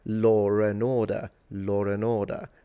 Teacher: Interestingly enough, the phantom R becomes a situation when there is no R at all, which can be strange for some people, like when you say law and order, you're putting an R in there because it makes it easier to say, even though there is no R in law and order